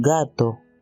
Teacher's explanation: su sonido es una parada velar sonora, lo que significa que suena como la G en gato.